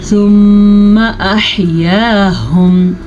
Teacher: ثم احیاہم، غنے کا دھیان رکھیے گا، میم پہ شد آ گئی ہے تو غنہ ادا کرنا لازمی ہے